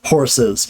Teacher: instead of saying horse, right, we add a schwa, an unstressed vowel in between and do the Z because the schwa itself is a vowel.